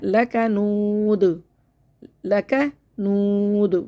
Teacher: देखिए लक़ बहुत लक़ पढ़ना है, लाम को भी मोटा कर देते हैं, काफ को भी मोटा पढ़ देते हैं, क़ौफ बन जाता है ये, इसको बारीक करना है, लकनूद, लकनूद, वाव को बिल्कुल होठ गोल करना है, और दाल पर कलकला करना है, लकनूद।